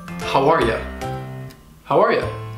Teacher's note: sometimes native English speakers will reduce it with the schwa and it'll sound like ya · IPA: / hou-ahr yuh /